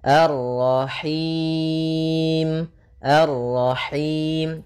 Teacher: Lepas dari yang namanya masuk hidung dan juga lepas dari namanya imalah yaitu harus kasrah sempurna